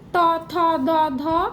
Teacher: ত থ দ ধ দন্তন্য। সবগুলোতেই জিভের ডগাটা দাঁতে ঠেকছে, তাই দন্তবর্ণ।